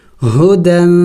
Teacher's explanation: میں نے اخفا کیا یعنی ناک میں آواز چھپائی